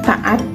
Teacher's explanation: Tidak ada bunyinya tapi ini seperti untuk jeda, seperti pada kata taat. Nah, itu kan ada sedikit jeda ya di saat kita ngomong taat. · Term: glotal